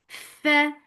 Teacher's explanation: give hams in fa. Hams is flow of breath for fatha open jaws. Fa, la, two counts long.